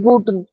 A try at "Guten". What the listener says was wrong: No, I still hear the E. That should not be there. Guten, not together. Merge them.